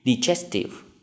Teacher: Như vậy đáp án đúng của chúng ta sẽ là đáp án B, có dấu nhấn ở âm tiết thứ hai.